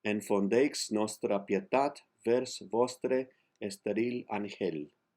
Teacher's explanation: Remember, the X can either be an SH or a CH. In this case, it's an SH.